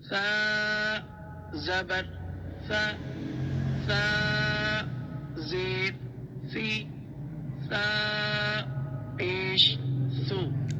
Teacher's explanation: اس کو آپ زبان ہلکی سی باہر کریں گے تو یہ ادا ہو جائے گی